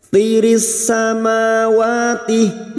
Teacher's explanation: ma wa masing-masing 2 harakat kita panjangkan, alif kecil di atas mad tabi'i.